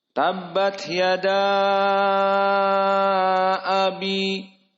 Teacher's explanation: Maka jika waqaf pada ya, hanya matobi'i saja. Adapun abi, maka dia hukumnya mad asli, mad tabi'i, hanya 2 harokat saja.